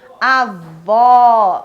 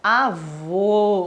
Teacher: avó, um som aberto, avô, um sinal fechado, um sinal gráfico, mas que fecha o som